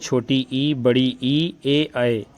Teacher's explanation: वे स्वर जिनके उच्चारण में जीभ यानी जिह्वा का आगे वाला भाग ऊपर उठता है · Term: अग्र स्वर